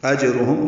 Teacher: جیم ساکن پہ قلقلہ